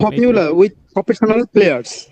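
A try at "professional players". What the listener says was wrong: স্ট্রেসের মাধ্যমে হবে প্রফেশনাল, প্রফেশনাল। ওকে, প্লেয়ার্স না, প্লেয়ার্স। এটা সাউন্ড হয়ে যাচ্ছে শেষের দিকে, বাট এটা এস সাউন্ড হবে না, জ সাউন্ড হবে।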